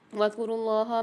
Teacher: اللہ کے نام کو موٹا کر کے پڑھیں گے اور کھینچ کے ہی پڑھیں گے